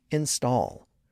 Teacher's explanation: it retains its stress on the second syllable